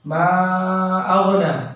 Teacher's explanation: मा अग़ना, मीम क्यों खींचे हैं, यहाँ पे जो मद बन रहा मद मुनफसिल, वही वाला मद यहाँ बनेगा। माँ में 4 अलिफ के बराबर खींचेंगे। अग़ना में खड़ा ज़बर है, थोड़ा खींचेंगे, अलिफ मद्दा बनेगा।